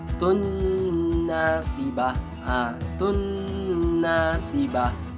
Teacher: Jadi kita baca dengan memasukkan bunyi huruf ta ke dalam huruf nun. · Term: idgham ma'al guna